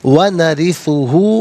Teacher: را کے نیچے زیر ہے، را کو باریک کر کے پڑھیں گے